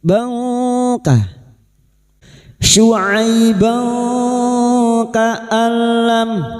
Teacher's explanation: Bka nun sukun atau tanwin yang bertemu dengan 15 huruf ini termasuk huruf kaf. Kita samarkan bunyi fathah tanwin dan mendengung selama tiga harakat. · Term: ikfa hakiki